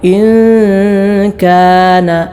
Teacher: ഇഖ്ഫാ, സാക്കിന നൂനിന് ശേഷം കാഫാണല്ലോ വന്നത്. ഇഖ്ഫാ ചെയ്തുകൊണ്ട് അഥവാ മണിച്ചുകൊണ്ട് ഇൻ കാന, നാവിൻ്റെ തല മുൻപല്ലിൻ്റെ ഊനിൽ തൊടാതെ ഇൻ കാന ഇങ്ങനെയാണ് ഓതേണ്ടത്.